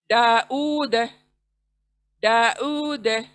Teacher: डा को खींच रहे हैं, ऊ को खींच रहे हैं